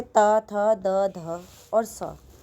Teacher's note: जिन व्यंजनों का उच्चारण ऊपर के दांतों पर जीभ लगाने से होता है उन्हें दंत्य व्यंजन कहते हैं